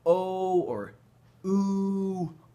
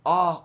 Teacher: when we say o or ooh our lips are rounded but when we say ah our lips are not rounded